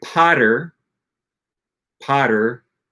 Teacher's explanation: the flap T in English is pronounced basically exactly like an R in Spanish